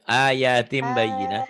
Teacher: bunyi n-nya jadi m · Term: iqlab